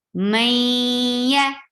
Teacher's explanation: May, the idgham bagunna, with gunna. So keep your sound in your nose and merge this noon into ya. Maya, ya short.